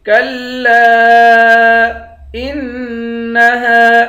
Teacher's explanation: حمزے کو نون کے ساتھ ملا کر نون پر غنہ کریں گے، ہا کے بعد الف ہے، الف حروف مدہ ہے، ایک الف کی مقدار کھینچیں گے۔